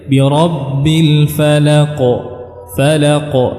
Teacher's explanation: ya tapi dengan memantulkan suaranya ee dan membiarkannya pada tempatnya artinya dia tidak membentuk harakat harakat yang tiga ya suaranya tidak mengarah kepada harakat yang tiga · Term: Qalqalah